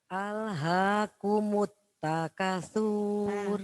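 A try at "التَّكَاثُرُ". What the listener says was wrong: Kanya panjang? Nah, sur itu kenapa nggak dibaca panjang? Panjang itu kalau ada wawu sukun. Karena tidak ada wawu sukun jadi langsung alhaakumut takasur. Langsung.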